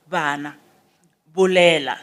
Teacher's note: The lips do not touch. They come closer to each other, then we pronounce it as bana. That is a fricative.